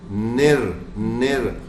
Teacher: تو نر را موٹا بھی کریں گے را کو، اور الف مدہ بھی ہے. سی عام سی چیز ہے.